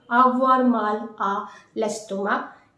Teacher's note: you don't need to pronounce the final C.